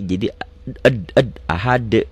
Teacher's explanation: Kenapa ada e-nya? Karena ini termasuk bagian dari huruf-huruf qalqalah